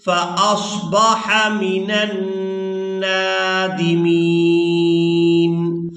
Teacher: نون پر غنہ کریں گے اور نون کو جب دوسری بار کھڑی زبر کے ساتھ ادا کریں گے تو کھینچ کر ادا کریں گے